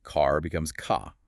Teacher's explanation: They drop that post vocalic R entirely, often lengthening the preceding vowel instead.